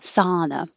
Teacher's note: we just simplify this with an ah and it sounds like ah like hot so if you think hot sauna that will be the right